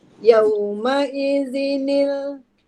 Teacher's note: Bila tanwin berjumpa dengan hamzah wasal, kena kembalikan semula nun kecil dia tu.